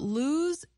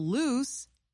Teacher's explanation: both words use the vowel sound oo. But lose ends in the z sound, while loose ends in the s sound.